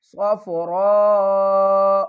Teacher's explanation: را کو پر بھی پڑھیں گے اور 5 الف کی مقدار کھینچ کر بھی پڑھیں گے